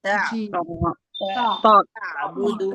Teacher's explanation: تا کو باریک پڑھیں گے اور عین حلق کے بیچ والے حصے سے نکالیں گے.